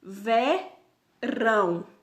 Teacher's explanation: Podem reparar que rão, ele é mais acentuado que vé, então rão é a sílaba tônica.